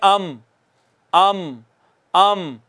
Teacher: दोनों होंठों के बाहर वाला हिस्सा, दोनों होंठों का खुश्क हिस्सा मिलता है तो मीम अदा होती है। दोनों होंठों के खुश्क हिस्से के मिलने से मीम अदा होती है